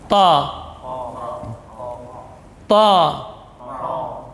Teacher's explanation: Ta ini huruf syiddah dan jahar. Ujung lidah di usul, pangkal gigi seri atas. Jadi posisi lidah itbaq. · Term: huruf ta